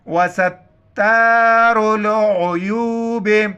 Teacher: आइन को गले से अदा करना है